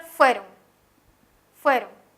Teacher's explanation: tiene el acento en la penúltima sílaba